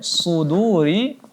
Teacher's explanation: Kemudian suduri huruf shad dibaca tebal.